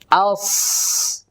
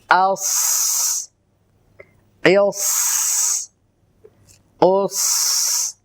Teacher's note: যদি আমরা সাকিন উচ্চারণ করি আস তখন কিন্তু শ্বাসের আওয়াজটা পরে হচ্ছে